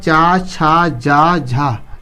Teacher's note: इसका उच्चारण स्थान क्या है तालू है इसको बोलते समय जीभ तालू से टकराता है